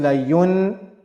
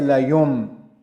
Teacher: because of that ba, this noon sakin sound will get changed to mim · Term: Noon gets changed to mim